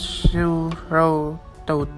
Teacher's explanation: The second of these diphthongs begin with an o like quality